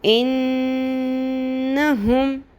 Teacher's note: میں نے نون کو کیوں اس کی آواز کو لمبا کیا اخفا نہیں کیا صرف نون کی آواز کو لمبا کیا